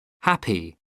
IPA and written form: ˈhæpi (happy)